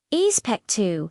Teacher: The X might sound more like an S sound. Especu And the O at the end might rise in pitch. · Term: upward inflection